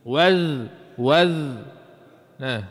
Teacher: Huruf za ni makhraj dia tubik sedikit lidah. Hujung lidah tu tubik sikit daripada gigi.